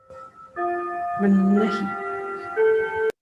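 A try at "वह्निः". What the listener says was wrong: It is not vannahi. It is vannihi.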